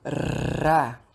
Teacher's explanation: Vibrante, sons como ra, que a língua vibra